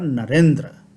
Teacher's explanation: नर का अकार और इंद्र का इकार मिलकर के एकार बना दिए